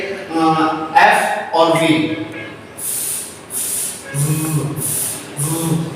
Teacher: उसमें हमारे अपर जो टीथ हैं वो लोअर लिप के साथ टच होते हैं, उसके करीब आते हैं, साउंड प्रोड्यूस होती है, तो ऐसे साउंड को हम लेबियो डेंटल साउंड कहते हैं।